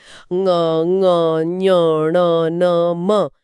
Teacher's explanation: अगर किसी की नाक पूरी तरह बंद हो जैसे जुकाम में, तो वो इन पांचों ध्वनियों का सही उच्चारण करने में असमर्थ हो जाएगा।